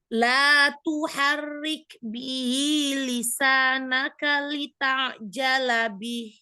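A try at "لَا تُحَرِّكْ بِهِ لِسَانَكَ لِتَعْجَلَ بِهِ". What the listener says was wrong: Ro-nya ditipiskan. Ro, ya. Ro kasroh tipis. Diulang ya.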